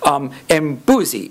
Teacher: you get a low boundary tone hooking onto it, and you get a falling tone on that penultimate syllable